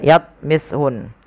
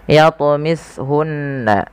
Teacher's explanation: ada bacaan qalqalah, wajib kita pantulkan lafal huruf ta. Jangan dibaca yatmishun, tapi harus memantul.